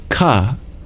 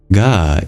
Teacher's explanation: As a consonant, it's formed in the base of your mouth or tongue, and it's what we call a soft consonant because it's voiced while you pronounce it